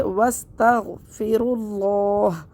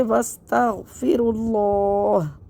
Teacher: یہ ہا کا زبر حالت وقف میں حذف ہو جائے گا، اور لفظ اللہ کے لام کو موٹا پڑھیں گے کیونکہ لفظ اللہ کے لام سے پہلے پیش ہے